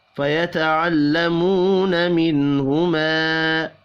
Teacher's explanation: فَيَتَعَلَّمُونَ مِنْهُمَا، واو مدہ اور الف مدہ ایک ایک الف کے برابر کھینچ کر پڑھیں گے، نون ساکن کے بعد ہا ہے، اظہار حلقی ہوگا، غنہ نہیں ہوگا۔